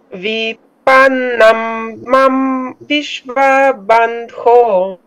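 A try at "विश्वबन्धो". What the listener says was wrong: Vishva, Vishva, no, va, not long. Vishva Bandho, vaba, Vishva Bandho.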